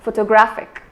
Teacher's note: the stress is not given on the initial syllable, neither is it given on the second syllable. Instead, it is given on the third syllable, photographic.